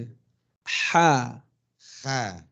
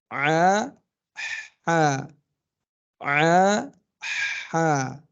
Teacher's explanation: Jadi ha itu dia di tengah tenggorokan kita menyempit. Bukan di pangkalnya ya. Tapi di tengah.